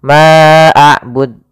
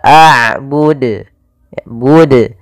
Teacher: Ma'abud, ini nambahkan hamzah. Harusnya tidak boleh ditambahkan hamzah, tetap dijelaskan qalqalahnya.